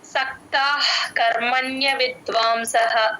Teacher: ఒత్తు సక్తా పక్కన విసర్గ H sound విసర్గ సగమే పలుకుతాం అః అంటాం క ముందు ఎప్పుడు విసర్గ వచ్చినా హెచ్ సౌండ్ పెట్టుకుంటాం